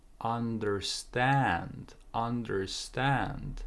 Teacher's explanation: so there's linking here I don't understand I don't understand and here you put more stress on second part understand